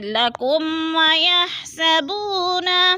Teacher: لکم میم ساکن کے بعد واو آ رہا ہے تو ادھر اظہار شفوی ہے، ادھر غنہ نہیں کریں گے